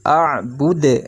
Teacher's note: Nah, lalu ada dalnya. Dalnya dibaca waqaf, maka berubah menjadi sukun ya. Dibaca mantul.